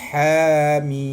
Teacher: pada ejaan kalimah mim itu, mi itu hendaklah dipanjangkan 6 harakat